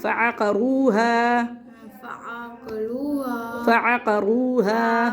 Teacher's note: واو مدہ اور الف مدہ کو کھینچنا، باقی کو جلدی پڑھنا ہے